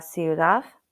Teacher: When it's at the end of a word, D sounds like a soft TH.